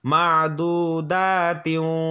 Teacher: কি বলছিলাম, যদি তানমিনের পর তাসদীদওয়ালা ওয়াও, অর্থাৎ তানমিনের পর তাসদীদওয়ালা মিম অথবা তাসদীদওয়ালা ওয়াও থাকলে তাহলে তানমিনটার সাথে তাসদীদওয়ালা ওয়াও এবং তার সাথে মিমটাকে গুণনা করে পড়তে হবে মিলাইয়া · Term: ইদগামে বাগুন না